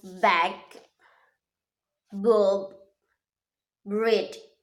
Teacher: our upper lips and our lower lips is touching, but the sounds B is voice. The different between P just now, that the P is not voice and the B is voice.